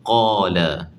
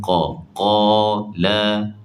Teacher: Qa kena angkat pangkal lidah sebab istillak. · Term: tafkhim